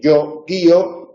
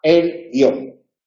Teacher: Y si lo pronunciáis, veis que efectivamente guío tiene la doble duración que le falta a guión